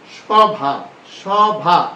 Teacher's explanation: আকারান্ত ধ্বনির পূর্বে শব্দের আদ্য অধনির উচ্চারণ সাধারণত বিবৃত হয়